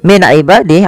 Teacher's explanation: Kemudian min ibadi ini kita tidak lanjutkan, kita wakaf di sini saja min ibadih ada nun sukun bertemu dengan ain yaitu dibaca dengan jelas suara nunnya karena dia ada bacaan izhar halqi.